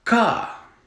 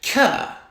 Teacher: if you take that k and move it further back your mouth you get ka and further forward you get k